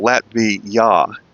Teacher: they're pronouncing that last syllable as a ya, J-A, so Latvia.